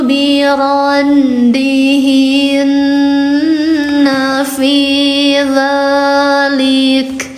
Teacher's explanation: A-nya 2, dibaca panjang 2 harakat karena ada fathah berdiri.